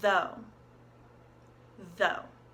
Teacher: in the word though we have a voiced th you can feel it on your throat